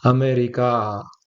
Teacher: So, America, the first A will be a short vowel, and the last A will be the long vowel, which is extension in it, right? America.